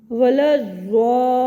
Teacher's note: ادا کرتے وقت مخرج میں آواز دراز رہتی ہے، اس لیے اس کو صفت استطالت کہا جاتا ہے۔ ضاد کی ادائیگی میں جو اس کی آواز ہے یہ اپنے مخرج میں زیادہ دیر تک دراز رہتی ہے، جیسے کہ دیکھیے وَلَا الضَّالِّينَ۔